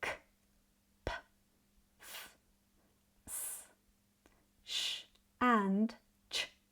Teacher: sounds where your vocal chords don't vibrate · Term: voiceless sound